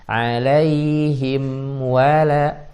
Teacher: Waw sama lam tipis dua-duanya.